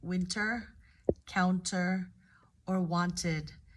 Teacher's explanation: in American English we often don't fully pronounce the T in words like winter counter or wanted